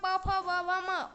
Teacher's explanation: प वर्ग का प फ व भ म ओष्ठ है